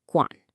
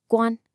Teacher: Let's start with the tone on guǎn. It's a third tone, which has that distinct falling then rising sound. · A lot of students flatten it out into a first tone